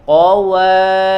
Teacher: Qawa, wa-nya harus jelas ya, harus dimanyunkan dulu. Qawa jangan qawari ya. · ri yang pertama tipis, ro-nya tebal. Qawariro min fi.